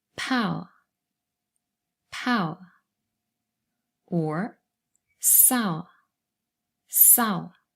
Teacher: It's always a diphthong first, and then the schwa sound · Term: triphthongs